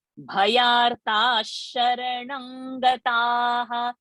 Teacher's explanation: Vishame durgame chaiva bhayartha. See now, after that visarga sh has come. So this visarga has to become sh.